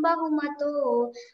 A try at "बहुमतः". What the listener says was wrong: బహుమతః చెప్పాలమ్మి. అక్కడ బహుమతో అని ఉంటుంది. మనం చెప్పేటప్పుడు మాత్రం అది ఒక కన్వెన్షన్. బహుమతః అని చెప్పాలా.